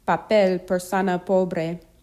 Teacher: English P but not explosive without the puff of air in the English sound